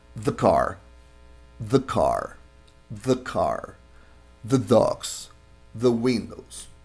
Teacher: cuando pegamos las dos palabras, casi que no se siente esa E